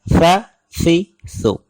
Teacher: زبان کی نوک اوپر والے دانتوں کے ساتھ ہلکی سی ٹکراتی ہے، یا زبان کی نوک دانتوں سے تھوڑی سی باہر نکالیں تو ادا ہوتا ہے